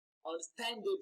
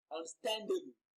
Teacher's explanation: you can actually hear the increase in the pitch and in the duration of pronunciation of the word or of the syllable stand. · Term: stress